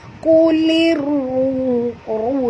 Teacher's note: Ini hukumnya idgham syamsi ataupun alif lam syamsiah Kulir ru di sini tebal, ra baris depan kena baca tebal, 2 harakat kena ada waw yang mati